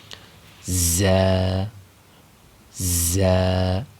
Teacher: زا کا مخرج زبان کی نوک یعنی زبان کا اگلا سرا نیچے والے جو دو دانت ہیں، یعنی جو اوپر والے دانتوں کی سیدھ میں جو نیچے دو دانت ہیں جن کا نام ثنایا سفلا ہے، ان کی جڑ میں زبان کی نوک لگانی ہے. سیٹی کی آواز یعنی ز کی آواز کو نکال کر زا کو ادا کرنا ہے.